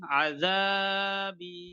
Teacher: নুন ইয়া সাকিনের ডান দিকে জের আছে, জেরটি হলো ইয়া মাদ্দা। ইয়া মাদ্দা এক আলিফ পরিমাণ টান দিয়ে পড়তে হয়